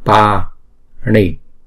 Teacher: chữ pa này là hai nhịp, bởi vì chữ A là trường âm